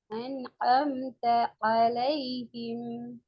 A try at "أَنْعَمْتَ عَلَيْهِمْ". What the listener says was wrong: ஏண்டு வருது. அன் அம் த அலைஹிம் என்று தான் வருது. சேர்த்து வரணும். சேர்த்து வரணும். ஏட சவுண்ட் மாறணும்.